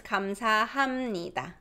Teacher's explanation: Because there's new sound that's nasal. B underneath becomes nasal. So M, 감사합니다. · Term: nasalization